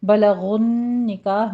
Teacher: غین کو پر پڑھنا ہے، آگے نون کی تشدید ہے، غنّے واجبہ کریں گے، 2 کاؤنٹ کرنا ہے۔